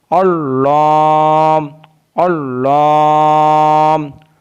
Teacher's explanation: अल पढ़ के गौर करेंगे तो ज़बान का किनारा और ज़वाहिक दांत से लेके सनाया दांत तक के मसूड़ों से जब ज़बान का किनारा टच होगा तो लाम का मखरज अदा होगा।